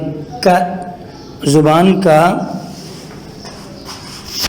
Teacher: زبان کا آخری حصہ اوپر والے حصے کے ساتھ لگے تو ک ادا ہوگا